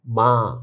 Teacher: মিম আলিফ নুনে গুন্না বলা হয়, যেটা নুক্তা সারা গুণ। এর উচ্চারণ অনেকটা চন্দ্রবিন্দুর মতো